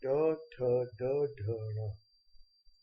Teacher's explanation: इनका इस्तेमाल करते समय हम मूर्धा अर्थात जीभ का उपयोग करते हैं, जिस कारण ये मूर्धव्य व्यंजन कहलाते हैं।